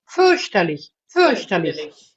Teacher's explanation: No, fürchterlich has no tongue R, please.